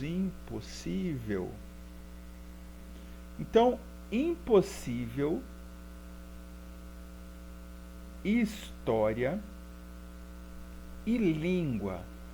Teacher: o assento delas recai sempre na penúltima sílaba